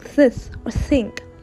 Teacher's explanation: continue with place of articulation we have another four inter dentals sounds produced with the tongue between the teeth